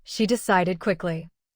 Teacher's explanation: Decide ends in d, the special trigger, so the ending becomes id. Say decided with three beats. In a normal sentence, keep the final syllable short. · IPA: /ɪd/